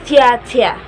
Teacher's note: To make the tia sound, you push your tongue to the front of the mouth, and then you make a little suction, th, th, and then you pull it apart in the front, tia tia.